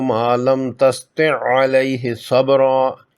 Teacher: اس آیت میں حرف عین اکٹھا دو بار آیا ہے، پہلی دفعہ ساکن اور دوسری مرتبہ مشدد۔ یہاں بھی ساکن عین کو مشدد میں مرج کر کے صرف مشدد عین کو پڑھا جائے گا۔ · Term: ادغام مثلین